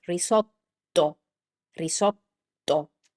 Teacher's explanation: I try to keep the T a little bit longer. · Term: double consonants